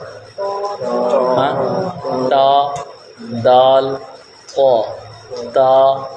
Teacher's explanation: تو یہ حروف نطعیہ 3 ہیں، تا، دال، طا۔ مخرج زبان کی نوک اور اوپر کے دانتوں کی جڑ سے ادا ہوتے ہیں۔